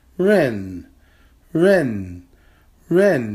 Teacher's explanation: It's a falling tone character.